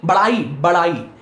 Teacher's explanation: एक झटका से उच्चरित होता है इसलिए इसे उत्क्षिप्त कहते हैं